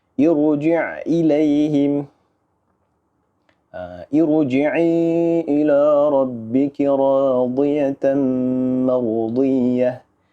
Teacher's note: Okay, walaupun ia berbaris bawah, walaupun hamzah wasal ni kita mula dengan baris bawah, tetap kita kena baca je dengan bacaan yang tebal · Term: Tebal huruf ra